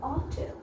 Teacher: Here the stress, the accent is on the second syllable.